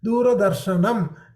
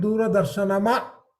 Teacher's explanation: Sh plus a, n plus a, and m. There is no akara here. So you don't hear the akara at the end.